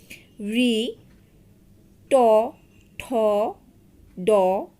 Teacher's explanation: যখন তোমরা এই ধ্বনিগুলো উচ্চারণ করবে তখন তোমাদের জিহবাটা এই তালুর অগ্রভাগ ভাগে চলে আসবে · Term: মূর্ধন্য ধ্বনি